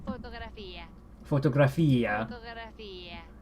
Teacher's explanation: There is a stress on the I pronunciation here.